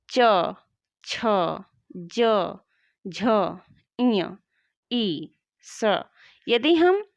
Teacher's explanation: यदि हमारी जिह्वा तालु को न टच करे तो इन व्यंजनों का उच्चारण नहीं कर पाएगी। यानी च, छ, ज, झ, इय, ई और श इनका उच्चारण बिना तालु की सहायता से नहीं किया जा सकता, अर्थात इन वर्णों का उच्चारण स्थान तालु है। · तालु जो कि हमारे जीभ के ऊपर का भाग होता है वो तालु होता है। देखो च कहते समय हमारी जिह्वा तालु को टच कर रही है कि नहीं कर रही